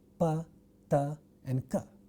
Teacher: A stop sound or a plosive sound is the term which means for the production of such a sound we have a total closure of the flow of air in the vocal tract and then sudden release